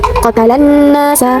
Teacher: Terdapat alif lam syamsiah, yaitu alif lam bertemu dengan huruf nun, huruf syamsiah. Cara bacanya huruf lam dimasukkan ke huruf nun.